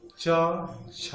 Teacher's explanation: छ ध्वनि का उच्चारण स्थान तालव्य है।